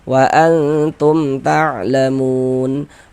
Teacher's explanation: Mim sukunnya dibaca jelas kemudian tidak didengungkan, maka dibaca pendek saja. Wa antum tlamun dibaca panjang. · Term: izhar syafawi, idhar syafawi